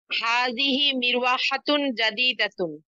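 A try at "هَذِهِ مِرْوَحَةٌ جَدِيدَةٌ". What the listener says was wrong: চমৎকার।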